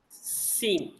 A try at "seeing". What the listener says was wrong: அவ்வளவுதான் seeing. seeing சொல்ல சீன் மாதிரி இருக்குது.